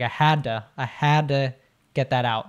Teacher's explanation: So the had to, and this is interesting because it's a D and a T, but oftentimes when we have that happen, a D and T together, it's kind of like the D trumps the T, like the T goes away